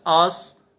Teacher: صاد حروف مستعلیہ میں سے ہے، اسے ہم پر پڑھیں گے